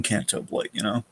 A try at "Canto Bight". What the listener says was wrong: Yeah, are you sure it's not Canto Bight? Yeah, you're saying Blight. You've said it like 4 times. I'm pretty sure it's Bite.